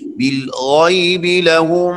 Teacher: ان الذین یخشون ربهم بالغیب لهم، غین بھی موٹا، بالغیب لهم غین یہاں پر بھی موٹا پڑا جائے گا